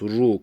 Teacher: ra harfi kalın olduğu için rü demiyoruz ru tamamen kalın okunması gerekiyor